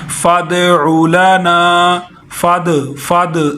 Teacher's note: دال ساکن ہے، اس کو ہلا کے پڑھیں گے